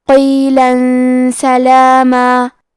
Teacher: سین حروف الاخفاء میں سے ہے، اخفاء کا معنی ہے چھپا دینا، تو ہم تنوین کو چھپاتے ہوئے اور غنہ کے ساتھ یہ حکم کو ادا کریں گے